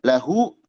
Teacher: lahu mad silah dua harakat